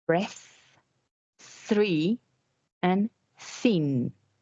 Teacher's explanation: So, one of these sounds is going to produce a vibration as you pronounce it and the other one is not the air is going to pass through and it's not going to produce any vibration in the vocal cords